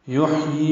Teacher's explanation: یحیی میں حا ساکن پہ ہمس ہے، یہ کھڑی زیر ہے، یہ 2 حرکات لمبا کریں گے.